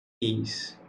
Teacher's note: O A se separou do I. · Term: hiato